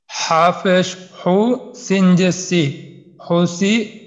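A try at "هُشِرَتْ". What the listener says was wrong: আচ্ছা, এটা কিন্তু সিন না, এটা হলো শিন, যেহেতু তিনটা নক্তা আছে। তো হুশিরত, হুশিরত।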